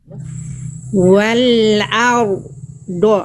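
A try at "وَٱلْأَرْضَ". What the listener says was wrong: Ro sukunnya bagus getarannya cuman jangan putus.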